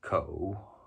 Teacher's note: in Mandarin it's pronounced ko, which is third tone.